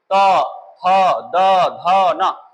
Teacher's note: दंत हम देखते हैं दांत का जो ऊपरी दांत है उसका निचला हिस्सा स्पर्श किया है तो ये दंत में गए, गोल होकर के ऊपर लगा।